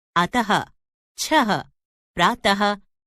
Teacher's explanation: विसर्ग का उच्चारण ह की तरह होता है